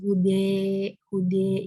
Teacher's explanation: imalah kubro ini lebih mendekatkan harokat fathah dengan harokat kasroh